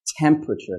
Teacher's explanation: that T sound is very strong and there should be air, okay? You don't want a you want t, okay? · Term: aspiration